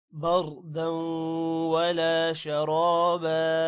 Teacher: شرابا را موٹا ہوگا، را کے بعد الف ہے لمبا کریں گے، با کو بھی لمبا کرنا ہے.